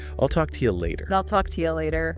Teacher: See how I will just becomes I'll, and to you often softens to ya, or sometimes even chia or cha.